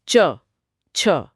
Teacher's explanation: अब आपकी जीभ ऊपर तालू को छू रही है। च छ हां मेरी जीभ मुंह की छत को छू रही है। लेकिन थोड़ा पीछे की तरफ। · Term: च वर्ग